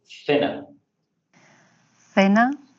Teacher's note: la lengua se pone dentro de los dientes o en la mitad de los dientes y sale rozando y eso se pone con este símbolo que es un símbolo como el de teta griego.